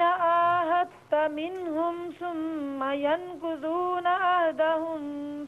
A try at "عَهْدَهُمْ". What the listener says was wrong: عہدہم میں آپ نے کیا غلطی کی ہے؟ نہیں، عہدہم میں میم ساکن ہے نا، یہاں غنہ نہیں کرنا.